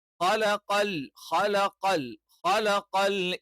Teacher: ഹ എന്ന് പറയുമ്പോൾ തൊണ്ടയുടെ ഏറ്റവും മുകൾ ഭാഗത്തുനിന്ന് വരുന്ന ഉച്ചാരണാണ്